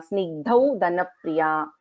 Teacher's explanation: ga is the alpaprana, dha is the mahaprana.